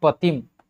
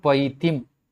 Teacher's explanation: यह ह्रस्व ई जो है वह दीर्घ ई में बदल जाता है।